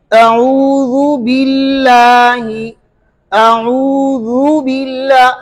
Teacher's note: जाल को और बा के जेर को बिल्कुल अलग किया